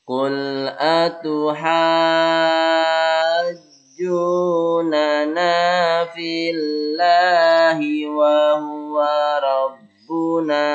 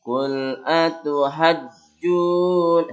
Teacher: Jadi ada naik sedikit, bukan kepalanya yang naik, tapi bacaannya yang naik. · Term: mad lazim